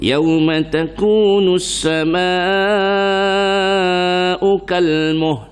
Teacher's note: Tak bunyilah lam tu, tapi lidah letak di lam.